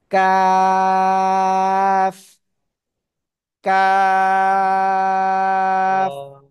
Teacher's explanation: জিহ্বার গোড়া গোড়া থেকে একটু আগে বাড়িয়ে তার বরাবর উপরে তালুর সাথে লাগিয়ে চিকুন আওয়াজে চার আলিফ টানে উচ্চারণ করব কাফ কাফ জোরে [মিউজিক] জোরে মাশাল্লাহ